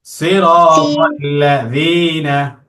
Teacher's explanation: যীনা পাতলা করে, জিহ্বার আগাটা উপরের দাঁতে লাগবে। সিরাতাল্লাযীনা।